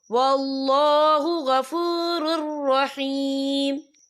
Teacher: یہ دیکھیں واللہ غفور، را کے پر تنوین ہے، تنوین کے بعد جو ہے را آ رہا ہے، اور را جو ہے حروف یرملون میں سے ہے، تو یہاں پر ادغام ہوگا، تو ہم اسے بنا غننے کے پڑھیں گے